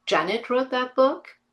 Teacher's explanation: using the statement form, not changing it into a question form, but then using a strong rising intonation